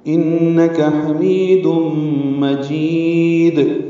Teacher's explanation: انک میں نون مشدد ہے، اس میں غنہ ہے، کاف باریک ہے، جلدی پڑھنا ہے، انک حمید مجید، ہا وسط حلق سے ادا کریں گے، می یا مدہ ہے، تنوین کے بعد میم آنے کی وجہ سے دوم میں ادغام ناقص مع الغنہ ہے، حمید مجید۔ جیم کو لمبا کریں گے اور وقفاً دال ساکن ہے، اس میں قلقلہ ہوگا، یہاں پہ وقف ضرور کریں گے۔